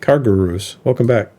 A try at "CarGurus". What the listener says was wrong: Car Gurus. You kind of say it in one word. Car Gurus.